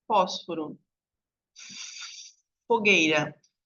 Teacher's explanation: o f ele é uma consoante surda · Quando eu faço só o som do F, que é o F, vocês vão ver que não tem vibração na corda vocal.